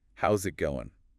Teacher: that final G often gets dropped or is really soft